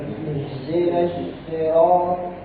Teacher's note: walaupun dia kasroh, dia tebal.